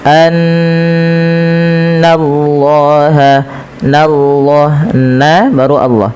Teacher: Setiap kita mendapati adanya nun berharakat tasydid, kita tahan dulu suara bunyi nnya sepanjang dua harakat karena ia kita namakan dengan bacaan ghunah. Kemudian lafal Allah bila didahului dengan fathah maka dia ditebalkan tapi nanya tetap tipis · lafal Allah bila didahului dengan fathah maka dia ditebalkan, tapi n-nya tetap tipis. Annallaha, nallah, na baru Allah.